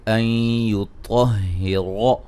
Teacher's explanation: طا اور را کو خوب موٹا کریں گے